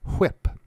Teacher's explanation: in the speech of some speakers, the word whip is articulated with a voiceless approximant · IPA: [ʍɪp]